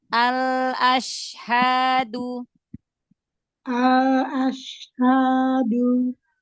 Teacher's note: Lam sukunnya selesaikan, dialirkan sedikit.